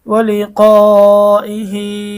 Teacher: হা এর আগে এবং পরে কোথাও সাকিন নেই, এই জন্য একালিফ টানতে হচ্ছে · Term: মধ্যে সেলায় কাসিরহ